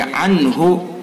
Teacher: عنہ میں اظہار ہوگا، یعنی نون کو جلدی سے پڑھیں گے